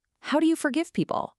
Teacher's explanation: you end with a higher pitch. It signals curiosity. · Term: rising tone